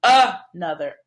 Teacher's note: it even has the beginning schwa sound